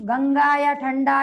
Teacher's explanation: अनुस्वार का उच्चारण सिर्फ नाक से होगा